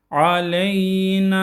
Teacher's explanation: Aleyna. Buradaki n'yi çekiyoruz. Bir elif